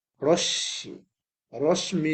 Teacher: মানে তালবস স দুইটা হয়ে যাবে